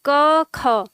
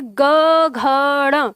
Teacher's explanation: यानी क ख में कंपन न के बराबर है, बिल्कुल न के बराबर, लेकिन ग घ ड़ में कंपन बहुत तीव्र हो जाता है, तेज।